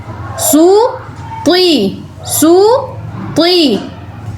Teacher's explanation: Next سین پیش سو، سو ہی کہنا ہے آپ نے، سو کی آواز نہیں آنی چاہیے، سو کہنا ہے۔ ہونٹوں کو پوری طرح گول کر کے آپ نے پیش کی ادائیگی کرنی ہے۔